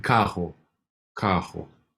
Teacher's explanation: And so this double R becomes a sound like a H